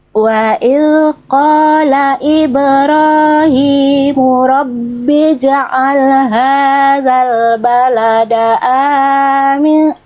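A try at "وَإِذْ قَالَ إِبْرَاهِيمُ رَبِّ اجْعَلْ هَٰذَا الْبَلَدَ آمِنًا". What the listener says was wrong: Nggak apa-apa, A-nya kepanjangan dikit, nggak apa-apa, udah bagus.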